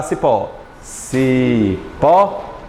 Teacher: cipó é mais forte em pó portanto ele é oxítona